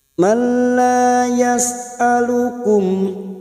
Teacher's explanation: mim sukun bertemu hamzah idhar safawi, mim sukun dibaca jelas tanpa mendengung